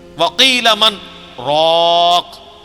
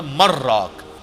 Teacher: یہاں پہ سکتا ہے ایک ہی سانس میں پڑھنا ہے لیکن تھوڑا سا وقفہ کر کے، ورنہ اگر یہ ڈائریکٹ پڑھا جاتا تو مر راک بنتا، چونکہ نون جو ہے وہ یہ نون غنہ یا جو تنوین ہے وہ اس کے بعد اگر 6 حروف میں سے کوئی حرف آ جائے، یا را میم لام واو نون، تو ادغام ہو جاتا ہے۔